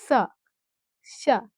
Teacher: যখন দন্ত স বলি তখন দন্ত মানে দাঁত টাচ করে বলি